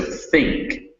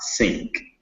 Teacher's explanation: they're really TH sounds with your tongue between your teeth and not like an S or a Z. So think, not sink.